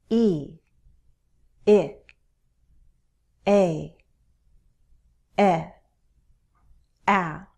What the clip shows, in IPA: i, ɪ, eɪ, ɛ, æ